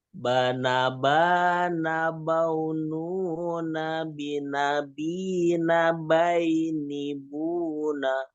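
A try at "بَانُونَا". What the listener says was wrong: Ya, baununanya, nu-nya jangan kepanjangan Pak. Baununa.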